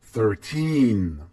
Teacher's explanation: 3 is bigger than 1, so the stress is on the second part of the word